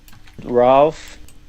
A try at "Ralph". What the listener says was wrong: So you kind of did rah and I would do ra